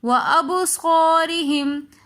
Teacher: بسمعہم وابصارہم، وابصارہم کے اندر با حروف قلقلہ میں سے آ رہا ہے تو اس لیے ہم با کی آواز کو دوبارہ سے پلٹا کر لے کر آئیں گے. وابصارہم، ابصار میں الف مدہ آ رہا ہے کیونکہ الف ساکن اس سے پہلے زبر ہے تو اس لیے ہم ابصار تھوڑا سا کھینچ کر پڑھ رہے ہیں